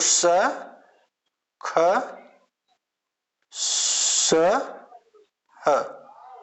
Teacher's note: वे व्यंजन ध्वनियां जिनका उच्चारण करते समय घर्षण के कारण गर्म वायु बाहर निकलती है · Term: ऊष्म व्यंजन